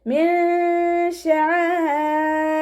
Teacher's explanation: നൂൻ സാക്കിനയ്ക്ക് ശേഷം ഇഖ്ഫാൻ്റെ ലെറ്ററായിട്ടുള്ള ഷീനാണ് വന്നിട്ടുള്ളത്. നൂൻ സാക്കിനയെ മറച്ചു വെച്ചിട്ട് മണിച്ചോതി കൊടുക്കുക. നൂനിൻ്റെ സൗണ്ടിനെ വ്യക്തമായിട്ട് കേൾപ്പിക്കരുത്. മിൻ ഷായിരില്ല എന്ന് ഓതിപ്പോവരുത്.